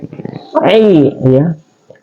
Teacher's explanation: Ain itu dia adalah wastul halki atau keluar di pertengahan tenggorokan